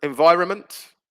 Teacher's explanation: by the way silent letter environment that's another one isn't it environment similar to government where you've got the n before the m disappears